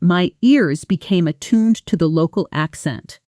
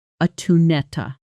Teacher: Attuned to almost merges into attunetta. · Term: natural connected sound